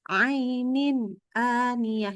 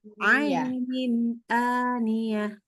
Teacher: waktu pas baca ainin, pas nin ketemu a-nya, tidak boleh putus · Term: Disambung